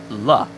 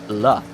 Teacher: Because if you do an L sound, la, you're taking the tip of your tongue and moving it up to the roof of your mouth, your palate, la. In Japanese, you don't really do that.